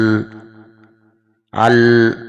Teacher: حمزہ لام زبر ال، ال، یہ تھوڑا لمبا میں کر رہا ہوں تو اس سے آپ کو محسوس ہوگا کہ زبان دانتوں کے مسوڑوں کے ساتھ لگی ہوئی ہے. تو جو آواز ہے وہ زبان کے پچھلا جو حصہ ہے اس میں جو خالی جگہ رہ جاتی ہے وہاں سے سپلٹ ہو کے باہر آ رہی ہے. یعنی کہ اپنے مخرج کے سے آواز باہر آنے کی بجائے دوسرے مخرج سے آواز باہر آ رہی ہے. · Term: انحراف